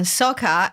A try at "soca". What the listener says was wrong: Or soca, not soca. Soca. A long O. Soca.